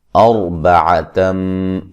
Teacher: یہاں را کو خوب موٹا کریں گے، را ساکن سے پہلے زبر ہے